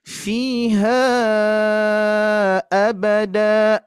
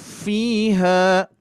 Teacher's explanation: Sehingga kalau ada tanda alis sudah barang tentu pasti dibaca 4 sampai 5 harokat ketika diwasolkan ya, bukan wakof ya. Kalau diwakofkan menjadi 2 harokat.